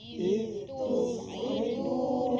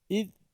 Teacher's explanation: Itu huruf zal bertemu dengan ta dibaca secara izhar. Tidak boleh kita baca id.